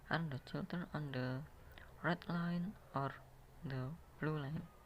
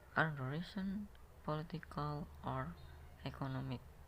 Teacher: In a list of alternative, the first item are spoken on a high-reaching intonation, but the final item is on a falling intonation. Dalam daftar pilihan, item pertama menggunakan nada tinggi, dan item terakhir nada turun.